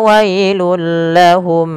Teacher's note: tanwinnya masuk ke huruf lam karena ia idgham bila gunah adanya tanwin bertemu dengan huruf lam